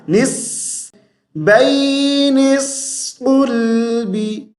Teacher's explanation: جیسے ہی ہم نون کو صاد کے ساتھ ملائیں گے تو سیٹی کی آواز آئے گی